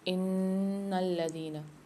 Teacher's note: ان الذين میں نون پر مشدد ہے اور لام پر بھی، دونوں کو سختی اور جماعت کے ساتھ پڑھیں گے اور نون میں غنہ کر کے پڑھیں گے، یعنی ناک میں تھوڑی دیر آواز کو رکھیں گے